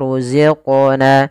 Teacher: Kemudian pada lafal qaf ada bacaan qalqalah. Yaitu suara qafnya dipantulkan. Kesalahan yang terjadi adalah dia tidak memantulkan.